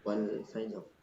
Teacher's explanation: Itu yang kayak wal fajr itu kita dengar seakan-akan ada e-nya. Ya emang seperti itu karena itu qalqalahnya.